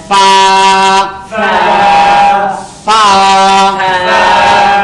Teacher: এটি নিচের ঠোঁটের পেট সামনের উপরে দুই দাঁতের আগার সঙ্গে লাগাইয়া মাঝখানে একটু বাতাস বের হয়ে যাবে